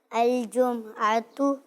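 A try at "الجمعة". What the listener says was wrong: आपने भी मीम को साकिन कर दिया, जम नहीं, जुमुआतु।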